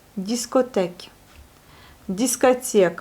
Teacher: le O se prononce comme le A, il n'est pas accentué, l'accent se porte sur les dernières syllabes, donc sur la voyelle I.